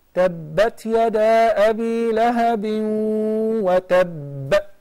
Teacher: So merge together, and when we stop, then we apply the shadda along with the sukoon that develops the qalqala, very powerful qalqala.